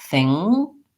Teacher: So what happens is my tongue lifts in the back, think, and then it drops down to make the K sound.